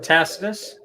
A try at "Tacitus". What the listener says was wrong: Tacitus, technically. The C is hard.